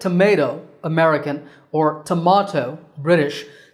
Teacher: in both Accents in the word tomato American or tomato British the second syllable is the one that's stressed